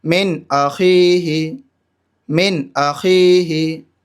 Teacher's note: یہاں پر نون ساکن کے بعد حمزہ آ رہا ہے حروف حلقی میں سے، تو اس وجہ سے یہاں ظاہر کر کے پڑھیں گے